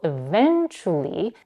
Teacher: Our next word eventually is a little bit more stressed. She is raising her intonation in the second syllable, which is a stressed syllable